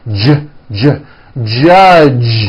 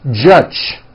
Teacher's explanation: the J sound in American English is always voiced